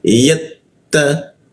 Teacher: Ta bertasdid maka ujung lidah tempel ke gigi dia